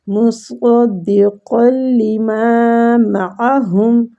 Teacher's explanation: مصدقا لما معہم، ماں کو کھینچیں گے، اور ہم کی ہا جو ہے نا، یہ اقصی الحلق یعنی حلق کے نیچے والے حصے سے یہ ہا ادا ہوتی ہے